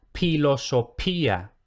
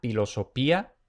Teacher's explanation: Luego tenemos la grafía PH, que es similar a CH. Entonces, una P aspirada